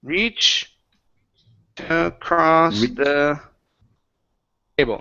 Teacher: cut the T off and connect it to the word across. So instead of saying reached across, it's now reach to cross.